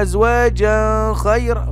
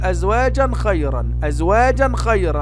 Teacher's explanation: هذا تنوين جاء بعده خاء، والخاء من حروف الإظهار